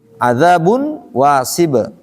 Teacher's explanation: Pastikan masuk hidung dengan wau. · Adzabun harus masuk ke hidung. Kalau nggak masuk ke hidung belum pas. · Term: bighunah, bigunnah